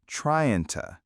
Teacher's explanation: In fast speech, trying to becomes trying to with the g dropped and the to turning into ta.